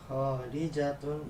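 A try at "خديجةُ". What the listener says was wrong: Bukan kho, tapi Khadijatu. Ya, kalau tidak pakai alif lam berarti pakai tanwin. Yang Khadijah enggak ada, Khadijah nama perempuan tidak bertanwin ya.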